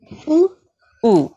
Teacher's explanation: Very nice, very short and soft as well. So there's no jerking sound. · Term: Dhamma